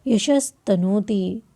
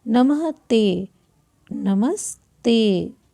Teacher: यशः तनोति, फिर आया खर त, तो विसर्ग के स्थान पर क्या हो जाएगा? आधा स हो जाएगा। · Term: स आदेश